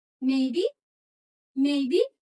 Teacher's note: turun dulu kemudian naik